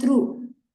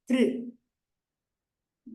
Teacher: do not pronounce it as U, not through, but thr. There is no U ki matra there, but it is r only.